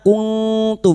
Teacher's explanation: Nun sukun bertemu ta, kita samarkan bunyi nun sukun ikfa hakiki. Kita samarkan bunyi nun sukun dan mendengung selama 3 harakat